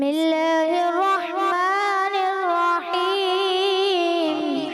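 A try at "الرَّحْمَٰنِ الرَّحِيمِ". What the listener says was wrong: ہا کی ادا میں کچھ کمی ہے لہٰذا اس کو مزید آپ بہتر کرنے کی کوشش کیجیے گا.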